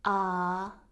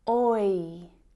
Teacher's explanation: Compare that monophthong sound, ah, which is just one sound, with the diphthong sound, oi, which is two sounds combined to make one sound. So the oi diphthong sound is actually made up of the o and I vowel sounds.